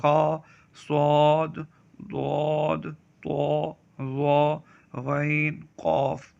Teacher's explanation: ان 29 حروف میں 7 حروف ایسے ہیں جو ہر حالت میں پر یعنی موٹے پڑھے جاتے ہیں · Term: حروف مستعلیہ